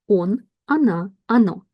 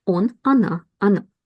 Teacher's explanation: these letters o are unstressed. We pronounce them as a short a.